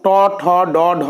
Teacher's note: তালুর ঠিক পেছনের অংশকে বলা হয় মূর্ধা। দেখো, ট, ঠ উচ্চারণ করতে গেলে জিভটা উল্টে গিয়ে মূর্ধায় স্পর্শ করে উচ্চারণ করতে হচ্ছে। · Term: মূর্ধন্য বর্ণ